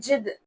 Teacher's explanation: یہاں پر دال کو جھٹکا دے کر پڑھیں گے کیونکہ اس کے اوپر سکون کی علامت ہے۔